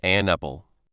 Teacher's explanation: But when someone who speaks English well says it normally, the n sound at the end of it doesn't stop. It goes right into the sound at the start of apple. So an apple sounds a lot like an apple.